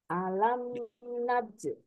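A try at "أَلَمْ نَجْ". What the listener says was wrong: Nah, masih ada hamasnya Bu. Naj. Diusahakan jangan sampai terdengar bunyi C ya. Naj. Nah, tanpa ada naj. Naj. Alam naj. Tanpa ada bunyi C ataupun agak-agak istilahnya becek gitu ya.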